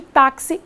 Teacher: A sílaba forte de táxi é TA, não é isso? É uma paroxítona terminada em i, ou seja, é uma paroxítona terminada diferentemente de AEO em OENS.